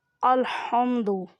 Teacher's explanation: ہا کو حلق کے درمیان والے حصے سے ادا کریں